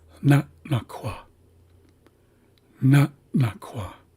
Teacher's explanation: this second glottalized N has a slight pause in front of it, so we hear na, and then a slight pause, and then na-kwa. So if you listen closely, I'll say it again, you should hear that pause after the first syllable.